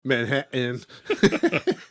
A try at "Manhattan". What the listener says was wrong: No T's in Manhattan. It's Manhattan.